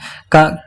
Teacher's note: कंठ अल्प प्राण अघोष